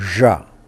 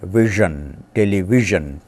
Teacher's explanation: It is the voiced counterpart of palato-alveolar consonant sh. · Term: voiced palato-alveolar fricative